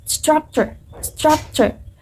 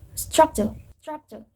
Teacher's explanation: In American accent, pronounce the r clearly while in British accent does not. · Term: the r sound